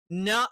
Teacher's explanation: നൂന് എന്ന് പറയുന്നത് നാവിന്റെ അറ്റം മുൻപല്ലുകളുടെ മോണയുടെ പിൻഭാഗത്ത്